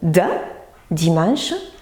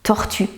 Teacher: pour dire de nous faisons vibrer les cordes vocales c'est une consonne sonore